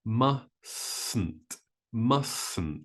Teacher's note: so we drop that first T · Notice that with the word mustn't, there is only one T sound.